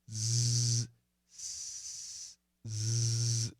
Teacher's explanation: Can you make a long Z? Z, vibrated sound like an S. But we got to vibrate. Z, z, z. That's the easy way to do it.